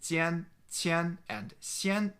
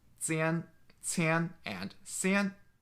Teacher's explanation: in northern dialects, these 3 pairs of words sound the same to each other, but they sound different to each other in southern dialects. So in addition to jian, qian, and xian, the southern dialects also have these sounds, zian, qian, and xian. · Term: Jiantuan Yin